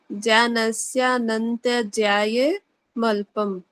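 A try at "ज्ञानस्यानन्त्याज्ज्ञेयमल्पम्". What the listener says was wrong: कहाँ है जया? कहाँ जया कहाँ है जी? याद है, आप जया बोल रहे हो उसको।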